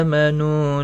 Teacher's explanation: حمزہ کے اوپر کھڑی زبر ہے، نو واو مدہ ہے، دونوں کو 1 الف کی مقدار کے برابر کھینچ کر پڑھیں گے